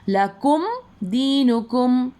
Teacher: لکم دینکم، دیکھو دو ورڈز میں یہ آیا ہے، میم ساکن کے بعد دال آیا تو ہم میم کی آواز کو ظاہر کر کے پڑھیں گے